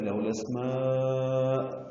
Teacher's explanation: سین ساکن پہ ہمس ہے. میم کو لمبا کریں گے، الف مدہ کے بعد حمزہ آنے کی وجہ سے یہ مد متصل ہے.